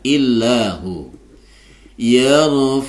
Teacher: Itu dibaca tipis karena sebelum lafaz Allah ini ada huruf yang berharokat kasroh. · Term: lafzul jalalah tarqiq